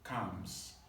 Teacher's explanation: The L sound is silent. So calms, just like the verb C-O-M-E-S, calms.